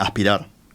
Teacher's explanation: la s que está entre la A y la p no no se pronuncia prácticamente · Pero hablábamos en la tanda que otra característica nuestra es el aspirar, las heces antes de las consonantes, como en aspirar, ¿no? La S que está entre la A y la P no se pronuncia prácticamente